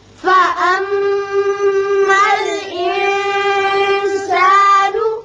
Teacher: میم مشدد ہے، غنہ کریں گے اور نون پر اخفاء ہوگا